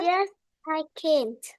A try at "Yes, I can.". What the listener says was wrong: No T.